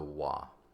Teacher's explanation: notice I pronounce this V as wa. That's how we do it in Latin. There is no V sound in Latin.